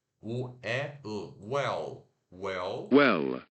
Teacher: O W fazendo som de U de uva curto, U, E de ela, e o L que você coloca a língua no céu da boca